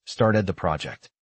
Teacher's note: note how the vowel in started is longer and the final D is lightly released. The phrase started the project connects smoothly, started the project.